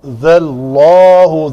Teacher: ذال کو پتلا کر کے اس میں جلالہ کا لام جو ہے وہ پر ہوگا